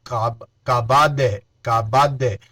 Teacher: دال میں قلقلہ بھی ہوگا، کبد نہیں، کبد، کبد، دال کی آواز دوبارہ لوٹ کر آئے گی